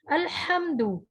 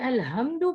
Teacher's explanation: ہا وسط حلق سے نکلنے والا ہے